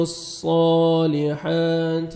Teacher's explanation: وعام عین کو پڑھیں گے اچھی طرح مخرج سے, لام کو صاد کے ساتھ ملائیں گے, صاد کو موٹا کر کے پڑھنا ہے اور 1 سیکنڈ کھینچنا ہے